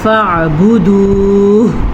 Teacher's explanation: ہا حلق کے آخری حصے سے نکلتا ہے، یعنی کہ وہ حلق کا حصہ جو سینے کی جانب ہے